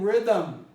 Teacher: for me to undo this difficult cluster i have to introduce a schwa it'll make it easier for me to pronounce it look what